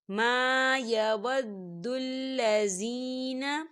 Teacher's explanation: ما یود الذین، زین یا ساکن ہے، یا ساکن سے پہلے زیر ہے تو یہاں پر یا مدہ ہو رہا ہے، تو اسے بھی دو حرکت کے برابر کھینچ کے پڑھا جائے گا